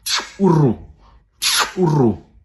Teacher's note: In Xam, this is a bilabial click.